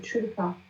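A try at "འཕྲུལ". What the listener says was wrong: Où est-ce que tu vois un tcheu ici? Jutul.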